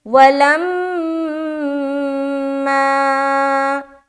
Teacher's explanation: میم مشدد کا غنہ بھی ہو گیا اور آگے الف مدہ بھی ہو گیا، کیونکہ یہ الف خالی ہے اور اس سے پہلے زبر آ گیا تو الف مدہ کا قاعدہ بن گیا، لہٰذا میم مشدد کے بعد الف مدہ بھی کرنا ہے۔